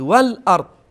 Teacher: دقت کنید لام ساکن هست و بعدش هم همزه هست، اینجا لام بدون قلقله باید ادا بشه و همزه رو با یه حالت شدت بگید